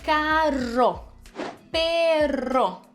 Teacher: Se estiver no meio da palavra com doble R, vibrante também.